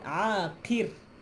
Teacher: bila ra nipih kita sebut aqir mulut senyum